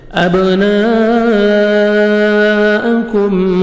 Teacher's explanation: الف مدے کے بعد اسی کلمہ میں حمزہ آ رہا ہے، 4 سے 5 سیکنڈ آپ نے ایکسٹرا مد کرنی ہے، کاف کو باریک پڑھنا ہے، میم ساکن کا اظہار ہے، جلدی پڑھیں گے۔ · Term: مد لازم